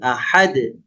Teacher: langsung dipantulkan ya tidak diayun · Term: qqalah